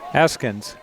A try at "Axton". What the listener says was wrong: No, it's K's before the S. How do you pronounce that? Is the K silent?